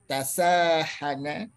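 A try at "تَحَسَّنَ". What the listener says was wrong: Kebalik hurufnya. Tahasana. Tahasana. Tahassana. Ingat, jangan ketukar hurufnya. Huruf nomor 1, nomor 2, jangan ketukar.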